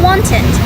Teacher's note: it sounds like an it sound in wanted, which happens after words ending in t or d.